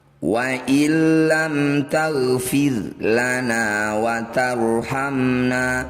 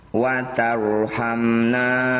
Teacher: Ro sukun didahului fathah disebut bacaan ro tafkhim atau tebal. Bunyi ro kurangi getarannya. Angkat ujung lidah sampai menempel di langit-langit lisan.